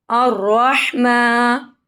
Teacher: یہ حمزہ وصلی کا قاعدہ ہے کہ ہر جگہ جس جگہ الف لام آ جائے تو اس جگہ زبر لگائیں گے۔ الرحمن، را کو زبر کی وجہ سے پر پڑا جائے گا، ہا کو حلق سے ادا کریں گے۔ میم کے اوپر کھڑی زبر ہے، اس کو لمبا کریں گے۔